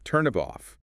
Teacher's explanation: The final consonant of one word links directly onto the initial vowel of the next.